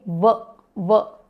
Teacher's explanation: दंत और ओष्ठ जो दांत और होठ दोनों से प्रोनाउंस किया जाता है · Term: दंतोष्ठ